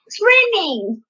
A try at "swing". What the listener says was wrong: Well, not swim. Swing. When you ride on a swing. Swing. Swing.